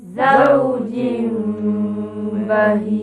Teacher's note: Bah apa bacaannya dengan hukum iqlqlab kita tahu ikum iqlab berarti tukarkan Nun jadikan mim